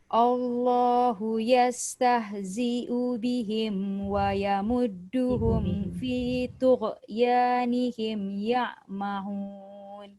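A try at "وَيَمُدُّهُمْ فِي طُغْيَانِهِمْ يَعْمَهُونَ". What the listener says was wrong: Kalau boleh ghain tu jangan diqalqalahkan Ghain ni kalau mati dia tak ada sifat qalqalah. Ya, jangan tak boleh re tu potong. Perasan tak ujung tu ada re? Re tu tak boleh.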